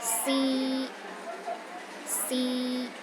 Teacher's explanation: The first tone is high and steady.